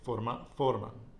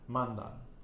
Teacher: the stress goes on the penultimate syllable